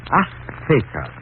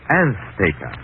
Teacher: She gave the Z a TH sound. That's Castilian Spanish.